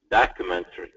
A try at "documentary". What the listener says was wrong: Great job. Very good.